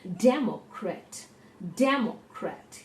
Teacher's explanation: there are three syllables and the syllable de is told more strongly